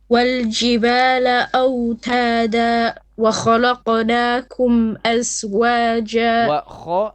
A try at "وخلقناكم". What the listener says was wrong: لا lam is flat. لا and then qaf is heavy.